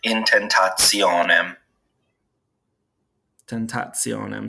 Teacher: so it makes a ts sound